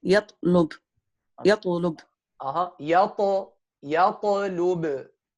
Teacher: try to touch the gum well so that you don't let breath with the ta